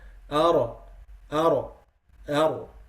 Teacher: a light trilling of the tongue when pronouncing the ra due to its tight articulation point. This reciter should be careful not to exaggerate the repetition, leading to the occurrence of more than one ra. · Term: at-takrir